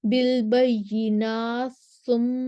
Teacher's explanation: بالبینات ثم تا کا سا میں ادغام ہو جائے گا